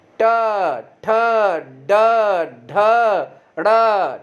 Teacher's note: और जब ट बोलोगे तो मूर्धा से जीभ जरूर ऊपर जाकर टच करेगी बार बार